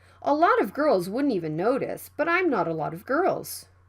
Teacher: the t sound is between vowels it can be flapped that is if we write the sentence by pronunciation we can